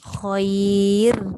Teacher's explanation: Nipiskan dan dia punya bunyi ra tu, takrir ataupun getaran tu kena ada. Khair. Getarkan lidah tu.